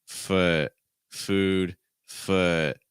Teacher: For instance, if I say food, I can also say foot, food, foot. I'm not making my oo sound longer just because it's considered a long vowel